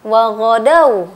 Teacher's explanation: mad lain itu artinya lembut. Jadi madnya itu enggak begitu kentara ya.